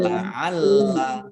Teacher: La'allakum lamnya ada tasdidnya dibaca double